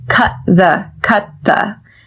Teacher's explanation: we do not pronounce the T in cut. However, we do pronounce the TH in the that follows. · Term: stop T